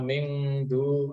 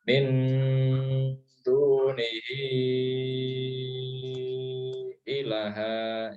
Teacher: Kalau dal ya, kalau huruf dal ta itu bacanya agak n ya, agak n tapi tetap berdengung ya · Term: ikhfa